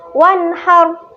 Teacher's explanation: Nah, ke-6 huruf ini merupakan huruf idhar halqi yang apabila ketemu nun sukun atau ketemu tanwin itu harus dibaca jelas dan tidak berdengung.